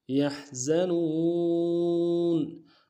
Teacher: زا یا سیٹی والا حرف ہے، سیٹی ادا ہوگی